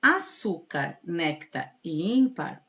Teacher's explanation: açúcar néctar e ímpar são paroxítonas ou seja a penúltima sílaba que é a sílaba tônica